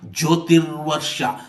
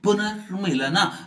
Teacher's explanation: ವಿಸರ್ಗಕ್ಕೆ ರ್ ಅಂದ್ರೆ ರೇಪ ಆದೇಶವಾಗಿದೆ